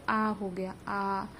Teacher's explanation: विवृत स्वर मतलब कि हमारा मुख पूरा पूरा जो है खुला होता है तब हम बोलते हैं जैसे आ हो गया आ।